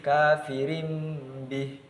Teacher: huruf tanwinnya atau harokat tanwinnya diganti dengan huruf mim karena bertemu dengan ba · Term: iqlab